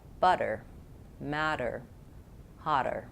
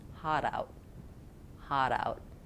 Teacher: Stopped T for most words, and T becomes D in the middle of things